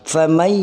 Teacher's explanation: ada dengung di hidung. Famay ya'mal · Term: idgham bi gunnah